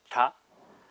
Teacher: the sounds are all made at the teeth, so with the tip of the tongue at the back of the teeth. So the first one is short and high, so ta.